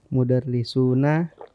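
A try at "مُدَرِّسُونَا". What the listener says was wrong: Iya, sunya nggak panjang.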